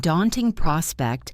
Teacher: In daunting prospect, the stress is on the first syllable of daunting.